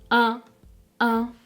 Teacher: vous devez vous assurer donc que l'air passe bien par le nez quand vous la prononcez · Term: voyelle nasale